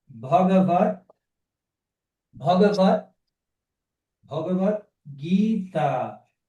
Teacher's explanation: Aqui a palavra é m com T seguida de consoante sonora. T é surdo, B é sonoro. Aí o que acontece? O T se transforma em D.